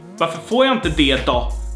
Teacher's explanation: So det. And then we have då, which in this case turns into ra.